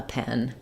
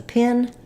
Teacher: the E is more open and the I is more closed.